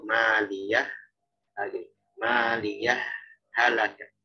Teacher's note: Jadi sakta itu ada sedikit sejenak berhentinya. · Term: saktah